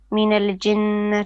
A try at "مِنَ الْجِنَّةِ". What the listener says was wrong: You're bouncing the lam. You're saying minalaji. No, it's minal jinnati.